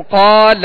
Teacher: قال، اب اس کو قال، لام کو نہیں کھینچیں گے، ٹھیک ہے؟ لام پر زبر ہے تو اسے بغیر کھینچے ادا کریں گے، اور قاف کو ہم نے دراز اس لیے کیا کہ قاف کے ساتھ الف مدہ ہے